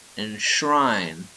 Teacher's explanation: A post-alveolar nasal is found in the word enshrine